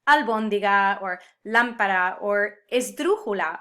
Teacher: these words that have the emphasis on the third to last syllable